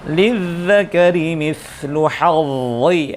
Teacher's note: harus tebal dia posisinya dha karena idbaq meskipun berharakat kasroh tapi tebalnya tidak boleh dikurangi sebagaimana berkurangnya huruf-huruf isti'la biasa ya. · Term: huruf dha